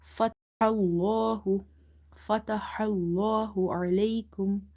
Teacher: before the letter lam in the word Allah, if you see fatha, you will make it heavy. So this word Allahu, we read it very heavy here.